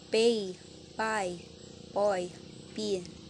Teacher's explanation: Voiceless bilabial stop P.